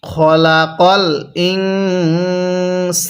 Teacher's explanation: এই নুন সাকিনটা আমরা গুন্নাহ করে পড়বো